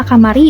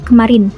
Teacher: suka memakai vokal penuh seperti a dalam kata kamari dibandingkan bahasa Indonesia yang pakai vokal pepet di kemarin